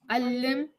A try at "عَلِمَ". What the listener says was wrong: No, there's no shadda. Alima. Alima. Alima, alima, alima.